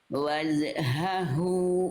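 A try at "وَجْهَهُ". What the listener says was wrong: Enggak jelas jim sukunnya. Jelaskan lagi qalqalahnya.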